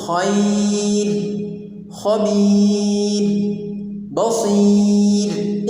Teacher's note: تو چونکہ یہاں پر را پر وقف کرنے کی صورت میں را ساکن سے پہلے یائے ساکنہ آ رہی ہے، اس لیے اس را کو وقف کی صورت میں ہم باریک ہی پڑھیں گے